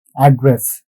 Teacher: When it comes to this location details address, the stress is on the first syllable. So this particular syllable, first syllable, we put the stress.